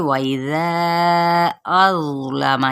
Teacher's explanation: यहाँ पे ज़ा को पुर पढ़ेंगे, लाम और मीम की हरकत को वाज़े करते हुए लंबा नहीं करेंगे